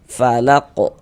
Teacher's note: karena huruf qaf ini dia menjadi sukun kedudukannya maka dia mantul.